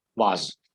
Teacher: the commonly accepted pronunciation is vase, because the SE becomes kind of Z sound.